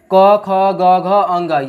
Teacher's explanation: क वर्ग का उच्चारण में सहायक जो अंग है वो हमारा कंठ है।